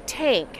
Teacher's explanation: What you're doing is you bring your teeth down onto your tongue with a little bit of space under your teeth, and you blow. And so if you get your tongue too tight against your teeth, people will think that you're making a T sound, a T, and they'll come out saying tank instead of thank.